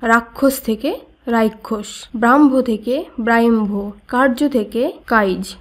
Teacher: বাঙালি উপভাষায় যুক্ত ব্যঞ্জনের আগে অপিনিহিতির মত স্বরধ্বনির আগম ঘটে